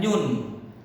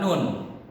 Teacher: Pasti di ujung lidah. Coba kalian sebut nun di tengah lidah, pasti bacanya nyun, bukan nun.